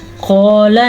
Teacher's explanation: قال یہ ہے موٹا قاف کیونکہ حروف مستعلیہ میں سے ہے